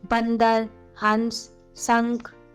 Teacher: अनुस्वार का उच्चारण नाक से किया जाता है